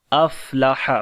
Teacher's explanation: फ़ा के ऊपर सांस को जारी करेंगे और हा को गले के दरमियान वाले हिस्से से पढ़ेंगे